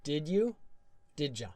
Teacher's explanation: 'd' + 'you' often blends to 'ja' or 'cha' sound